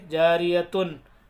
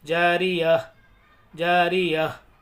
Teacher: हालांकि पढ़ना क्या चाहिए, जारियतुन, नहीं पढ़ेंगे क्योंकि यहाँ सांस तोड़ रहे हैं, हम आयत कर रहे हैं, तो इसलिए हम इसको हाई साकिना बना देंगे। जैसे लास्ट में हा की आवाज़ आएगी हल्की सी